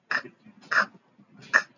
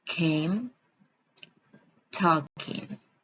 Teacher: The sounds k, k, k is voiceless velar stop.